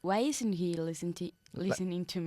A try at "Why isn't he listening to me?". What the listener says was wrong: La T más fuerte. Why isn't he?